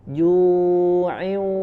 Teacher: Nah di sini idgham bi gunnah ya, maka ketika dengungnya gunnahnya masuk ke huruf waw ya, dileburkan ke huruf waw, maka posisi membacanya sudah masuk ke dalam hidung ya, al khayshum. Ju'in ya, sudah masuk suaranya ke hidung ya, karena ada gunnah sempurna dengungnya.